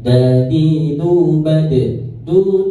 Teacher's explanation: huruf qalqalah itu jadi ada pantulan semuanya